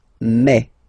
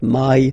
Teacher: Remember when you combine this a and then e vowels, you get the sound e. So really open e.